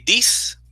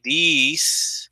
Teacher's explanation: It's a short sound, this, right? When you say these, is a longer sound